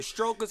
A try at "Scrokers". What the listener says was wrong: She don't call it strokers. It's scrokers. She don't pronounce no T's in that.